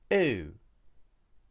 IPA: uː